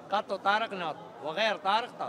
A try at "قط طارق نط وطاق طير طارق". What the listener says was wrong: غير منو شيل الغير بس شيل الغير شيل الغير وطاق طير طارق مو بسرعه